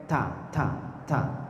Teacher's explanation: Huruf ta itu ujung lidah bertemu dengan pangkal gigi sari atas. Ta. Ujung lidah bertemu dengan pangkal gigi sari atas. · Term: keluar nafas